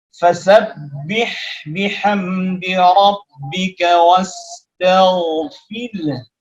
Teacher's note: huruf ha ini makhrajnya ada di tengah tenggorokan, tapi mempunyai sifat yang sama seperti sifatnya huruf ha, yaitu sama-sama mengalirkan nafas, juga sama-sama mengalirkan suara.